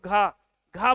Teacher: घ घ बोलते समय वायु की मात्रा ज्यादा होती है